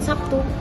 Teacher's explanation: bunyi B berubah menjadi P itu biar kita mudah ngucapinnya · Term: asimilasi